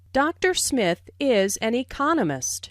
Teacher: notice the stress on Economist this content word has new information so it is emphasized there are four syllables in Economist